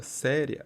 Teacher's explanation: nesse caso é um ditongo crescente porque o i é pronunciado com menos intensidade